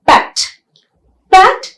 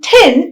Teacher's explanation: When you look at T that comes at the end of a word, for example, pat. Pat, the T in pat is not aspirated, whereas the T in tin is aspirated.